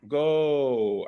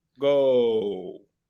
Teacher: if we were to break it into 2 halves, you get like an O at the start and an oo towards the end. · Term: these O sounds